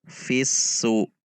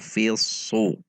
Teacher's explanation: Jika huruf sod maka dibaca fisu. Jadi ada menegangkan pangkal lidah atau mengangkat pangkal lidah, sehingga terkesan hurufnya menjadi huruf tebal. Fisu. Su 1 harokat, perhatikan sifat dan makhrajnya huruf sod.